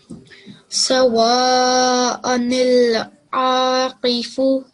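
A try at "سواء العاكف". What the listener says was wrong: What you pronounced was a very, very beautiful qaf, okay? But this is a simple gaf. Okay? You gotta make this thick and heavy.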